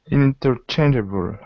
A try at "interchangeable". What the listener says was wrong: Again, I notice a slight accent on the end. So able is like saying a bull.